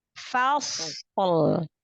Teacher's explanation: Fa-nya tipiskan dulu, sodnya baru tebal, lalu tahan sifatul huruf pada sod.